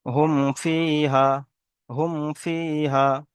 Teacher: মিম সাকিনের পরে ফা এসেছে, তাই মিম সাকিনকে বিনা গণ্যায় জাহির করে তাড়াতাড়ি পড়তে হবে।